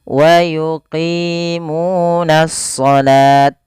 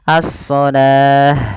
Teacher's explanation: Taknya diganti dengan ha yang dimatikan kalau kita waqaf.